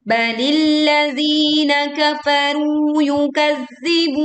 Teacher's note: Yukadzibun, tekan za bertasydid, kemudian berwaqaf dengan panjang bun 2, 4 atau 6 harokat